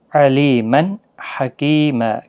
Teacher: تنوین کے بعد حروف حلقی کا ہا آیا ہے، اظہار حلقی ہوگا، گنہ نہیں ہوگا، یہاں پر تنوین کو ظاہر کر کے پڑھیں گے۔ علیمن حکیم، کی یا مدہ ہے، 1 الف کی مقدار کے برابر کھینچ کر پڑھیں گے۔